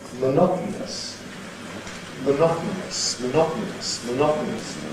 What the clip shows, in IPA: məˈnɒtn̩əs